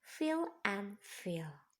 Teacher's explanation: produced with the upper teeth and inner lower lip